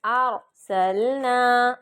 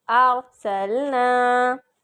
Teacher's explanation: قلقلہ نہیں کرنا، را کو بالکل نہیں ہلانا. ارسلنا، زبان کو روکنا ہے کہ وہ را کو ہلائے نہیں، ٹھیک ہے.